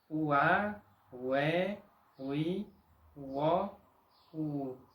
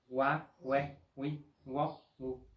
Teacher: Cuando tiene sonido de U, suena como una U separada de la otra vocal, no como una U superpuesta a la otra vocal. Tiene sonido de UA, UE, UI, UO, UU, no sonido de WA, WE, WI, WO, U.